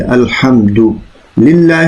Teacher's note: لفظ اللہ جو ہے اس کو باریک پڑھنا چاہیے